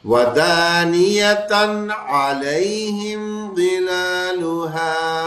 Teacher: تنوین آیا اس کے بعد عین آ گیا نا، تو ہمیں بس اس کو دھیان کرنا ہوتا ہے کہ حروف حلقی آیا ہمیں غنہ نہیں کرنا، نون اظہار ہونا ہے، اخفا نہیں ہونا.